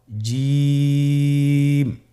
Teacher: এর মাখরাজ হলো জিহ্বার মধ্যখান তার বরাবর উপরের তালুর সঙ্গে লাগিয়ে উচ্চারিত হয়